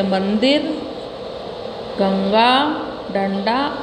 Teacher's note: अनुस्वार का उच्चारण करते समय हवा केवल नाक से निकलती है।